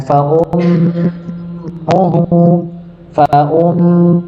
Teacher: Huruf mimnya bertasydid maka ditahan